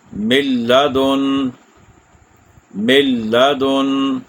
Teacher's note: دوسری مثال، ملدن، ملدن، نون ساکن کے بعد لام ہے، میم کو ڈائریکٹ لام سے ملا دیا، غنہ بھی نہیں ہوا اور رکنا بھی نہیں ہے، تیزی سے آگے پڑھ دینا ہے، کھینچنا نہیں ہے کسی بھی حرف کو۔ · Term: ادغام